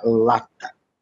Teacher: o primeiro a é que é forte é Tonico ele demora mais do que o último o último lá né Mas isso não faz diferença para ó